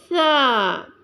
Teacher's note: سا جو ہے وہ زبان کی نوک اور ثنایا علیٰ کے کنارے یعنی سرے سے ادا ہوتا ہے۔ سا کو ادا کرنے کے لیے نرمی اختیار کی جاتی ہے۔